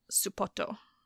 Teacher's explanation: You put in the su because you can't say S and P back to back. And then you have the extra O on the end because you can't end it with a T